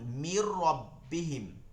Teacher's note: নুন না পড়ে পরবর্তী র সাথে মিলায় পড়ছে